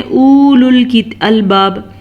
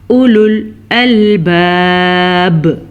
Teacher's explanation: اب بعض لوگ غلطی کرتے ہیں، پڑھتے ہیں اولو الالباب، نہیں جی یہ غلط ہے، واو پہ ساکن نہیں ہے تو ہم واو نہیں پڑھیں گے، ہم پڑھیں گے اولل، حمزہ پیش او، لام پیش لام، لل، اولل الباب، ٹھیک ہو گیا۔